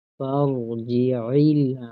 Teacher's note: اس غلطی سے بچنا ہے، دونوں کو جلدی پڑھیں گے، فرجعل، عین کو درمیان گلے کے درمیان کے حصے سے ادا کریں گے ، یہاں حمزہ نہیں پڑھنا، فرجعل، ال کی غلطی سے بچنا